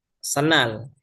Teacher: Huruf D yang ada pada kata sendal itu dileburkan. suaranya dihilangkan. Begitu ya, dileburkan ke huruf N, senal. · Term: asimilasi